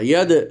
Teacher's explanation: এ দাল হলো কলকলার হরফ, এই জন্য ফুটালাম আমরা